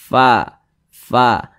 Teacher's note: ketika kita mengucapkan huruf Fa ada nafas yang mengalir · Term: sifat hams